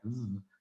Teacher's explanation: when you make a V, you can feel it vibrating in your throat just there